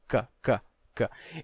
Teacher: O som de que é um som velar, em que a língua toca lá atrás